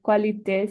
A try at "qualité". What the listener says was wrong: Pas qualité, mais qualité. Qualité, oui. Qualité. QU, c'est K, comme c'est pas question, c'est question, question. En anglais, ou, question, mais en français, que, question, question, qualité, qualité.